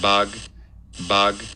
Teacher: at the very end we get a nice clear stop release burst · we get another stop closure at the end with voicing in it middle too so that's why we have this low-frequency hum at